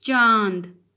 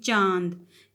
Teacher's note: आप लोग साथ में बोल सकते हैं चांद। चांद बोलते हुए मैंने उच्चारण नाक और मुख दोनों की सहायता से किया है चांद, क्योंकि ये अनुनासिक हमने यहाँ पे लगाया चांद।